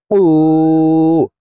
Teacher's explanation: কফ হরফের উচ্চারণ জিহ্বার গোড়া তার বরাবর উপরে তালের সঙ্গে লাগাইয়া পড়তে হবে।